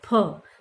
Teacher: उसको एकदम से वायु को रोका फ, और वेग के साथ बाहर निकाल दिया फ, तब हमारा फ बोल रहा है।